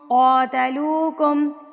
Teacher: کاف موٹا ہے نا تو اکفا بھی آپ نے موٹا ہی کرنا ہے